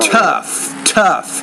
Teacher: you need to pronounce the T with more air